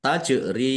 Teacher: Jim sukun bacaan qalqalah dibaca memantul ditampakkan pantulannya